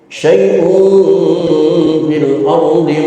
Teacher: tanwin ketemu huruf fa, ikhfa juga, namun ikhfanya ikhfa awsat, ikhfa menengah, maka suaranya bukan suara ang dan juga bukan suara n, tetapi suara m